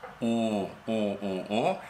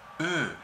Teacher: Si pronunciamos una O, la lengua está mucho más baja, está al fondo de la boca.